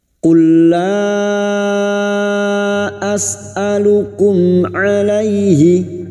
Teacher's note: Masuk pada huruf lam berikutnya. Qul la pertemunya mad dengan hamzah di lain kalimat mad jaiz munfasil 5 harakat kita panjangkan